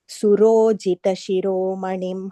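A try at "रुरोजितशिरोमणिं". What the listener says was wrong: Fourth line, first word. Rurojita. I think you said Surojita by mistake.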